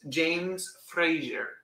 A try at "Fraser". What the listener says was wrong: There's no jury. There's no jury. Zer. Frazier. Then how come in Scotland they don't pronounce it Frazier? Frazier. There's no jur.